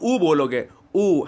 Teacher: जब उ करते हो तो आपके ओठ देखो गोलाकार हो जाते हैं